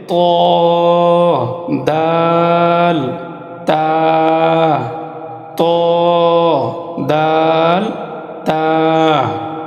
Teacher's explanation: 11 নম্বর মাখরাজ জিহ্বার আগা সামনের উপরের দুই দাঁতের গোড়ার সঙ্গে লাগাইয়া। জিহ্বার আগা সামনের উপরের দুই দাঁতের গোড়ার সঙ্গে লাগাইয়া 3টি হরফ উচ্চারিত হয়